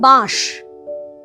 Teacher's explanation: অনুস্বারটা যেই লোপ পেয়েছে, বয়ের সঙ্গে যুক্ত থাকা অ একটা চন্দ্রবিন্দুওয়ালা আতে পরিণত হয়েছে।